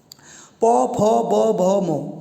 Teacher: इसको बोलने में आपका जो होंठ है वो लगातार प्रयोग में आएंगे, तो इसलिए इसको कहते हैं ओष्ठ व्यंजन।